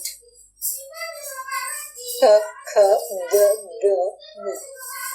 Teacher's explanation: Wherever the sound from the pit of your throat, ka, kha, ga, gha comes, no? From there only this nga sound should also come.